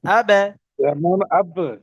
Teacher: কলকলা করে একটু ধাক্কা দিয়ে পড়তে হবে >> কলকলা মানে ধাক্কা দেয়া একটু ধাক্কা দিয়ে পড়তে হবে >>